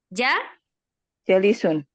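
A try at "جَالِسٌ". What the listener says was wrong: jalisun ya, jimnya panjang.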